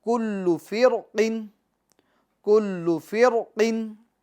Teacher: बेहतर यही है कि इस रा को पूर पढ़ें, हालांकि बारीक भी पढ़ सकते हैं